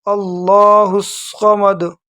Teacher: یہ جو دال ہے اس میں تھوڑا سا جو ہے نا جھٹکے کے ساتھ پڑھنا ہے، کیونکہ یہ حروف قلقلہ میں سے یہاں تھوڑا معمولی سا جھٹکا دیں گے دال کو، اللہ الصمد آخر میں، سمجھ گئے جی؟